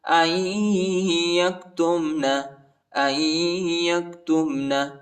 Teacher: حمزہ کو یا کے ساتھ ملائیں گے، نون نہیں پڑھا جاتا، نون ساکنہ ہے